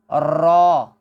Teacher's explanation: را جو ہے یہ زبان اور اوپر والے تالو کے جو ابھرے ہوئے حصے ہیں اس کے اندر ایک ارتعاش پیدا ہوتی ہے، یعنی ایک لرزش پیدا ہوتی ہے۔